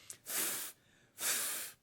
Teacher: before we do the V sound of course we practice making the F sound which is done by putting the upper teeth on the lower lip